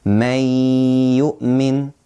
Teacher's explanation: We're not saying man yu'min. No, we're merging this noon and we're taking it and we put it into the ya, and we add the nasal sound ghunnah, because ya is one of the idgham letters and it is one of the idgham letters with ghunnah.